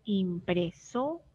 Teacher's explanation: En el ejemplo, impresora, nos fijamos que la que suena más es la sílaba SO. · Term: sílaba tónica, sílabas tónicas